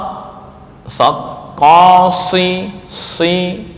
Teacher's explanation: menutup pada langit-langit ya artinya kembang suara di mulut itu penuh